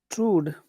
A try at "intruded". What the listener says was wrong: True. I think just true. No D, just true.